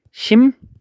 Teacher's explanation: 그 다음에 봤던 것 중에 하나가 뭐 있냐면 비음화 중에 하나가 미음하고 이응이 리을과 만났을 때 미음하고 이응은 가만히 있고 이 리을이 니은으로 바뀐다